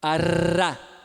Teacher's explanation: É alveolar mesmo. É o mesmo lugar do nosso dá do inglês.